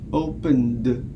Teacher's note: if it follows a voiced segment or a voiced sound, it's pronounced as d.